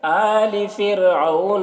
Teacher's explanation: را کو باریک پڑھیں گے کیونکہ را ساکنہ سے پہلے زیر اصلی ہے تو را کو باریک پڑھیں گے.